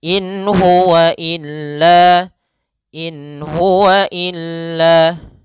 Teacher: nun sukun bertemu dengan huruf ha maka Suara nunnya jelas in Hua illa in Hua illa Ya jelas tidak boleh ditahan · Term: izhar